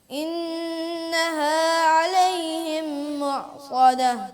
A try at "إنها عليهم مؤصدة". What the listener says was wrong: غنہ پورا کرنا پڑے گا.